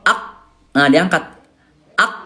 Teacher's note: Kenapa huruf qaf? Karena huruf qaf huruf tebal, huruf pangkal lidah. Nah gini bunda ya, ak, nah diangkat, ak, nah gitu ya, pangkal lidah dinaikin ke langit-langit lunak ya, ko, nah gitu ya.